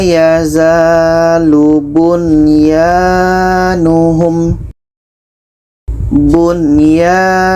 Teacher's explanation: nun jelas, ya jelas, dan tidak ada dengung. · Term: izhar wajib